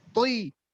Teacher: Ketika kasro juga tebal. Toi. Tetap tebal. Karena to ini sifatnya itbaq. Tebal sekali. · Saya langsung ke kesalahan ketika ta dan to tersebut tidak menebalkan dan memberikan tekanan ketika mengucapkan to dalam setiap keadaan. Jadi to itu harus tebal dan memberikan tekanan.